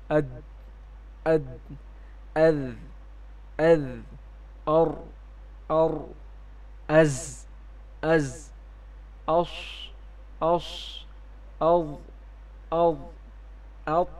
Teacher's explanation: ان تمام حروف کی ادائیگی کے وقت آواز جو ہے وہ مخرج میں قوت کے ساتھ ٹھہر رہی ہے اور سانس جو ہے وہ بند ہو رہی ہے اور آواز میں ایک قسم کی بلندی ہے، جبکہ صفت ہمس والے حروف میں آواز مخرج میں ذوف کے ساتھ ٹھہرتی ہے جس کی وجہ سے سانس جاری رہتی ہے اور آواز میں ایک قسم کی پستی ہوتی ہے۔ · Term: صفت جہر